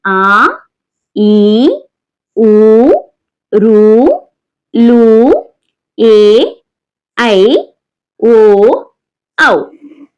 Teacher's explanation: ద్విమాత్ర కాలంలో ఉచ్చరించే వాటిని దీర్ఘాలు అంటాం